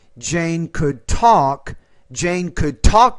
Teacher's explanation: you got to pronounce that t with more air you're making it sound like a d